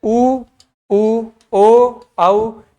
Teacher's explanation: होठ एकदम गोल हो जाते हैं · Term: वृत्ताकार